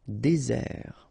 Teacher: And really this z sound just because you get one S between the two vowels.